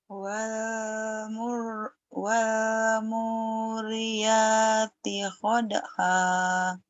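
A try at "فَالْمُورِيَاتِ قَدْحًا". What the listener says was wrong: wal fa bukan wa ya fa falmu saya juga salah fa fal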